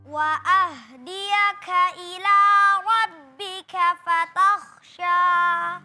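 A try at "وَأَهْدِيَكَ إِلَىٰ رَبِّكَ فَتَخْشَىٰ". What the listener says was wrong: Tapi tadi hamesnya berlebihan. Ya, kalau berharokat dia tetap ada hamesnya, tapi tidak tampak seperti ketika dia sukun.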